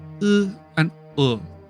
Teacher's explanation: Some humanoid wizards might choose to pronounce these as [u] and [o] if [ɯ] and [ɤ] are not in their native language, since there is no distinction to worry about, but dragons will always pronounce /ɯ/ and /ɤ/ unrounded